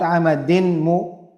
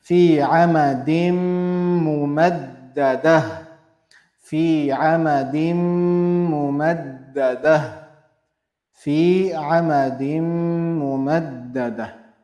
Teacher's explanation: the tanween will get merged into meme to become one, and we'll be applying ghunna on meme. Fi amadim, amadim, straight to meme. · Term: idgham